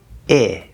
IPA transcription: ɪ